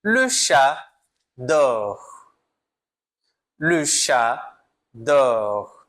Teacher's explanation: Perceba que o T não é pronunciado.